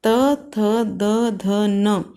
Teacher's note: इन वर्णों को बोलते समय हमारी जीभ दांतों को टच करती है, इसलिए इन्हें दंतव्य व्यंजन भी कहा जाता है।